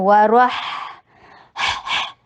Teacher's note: और हा में ब्रेथ की आवाज़ ब्रेथ आनी चाहिए, सांस का फ्लो जारी रहता है।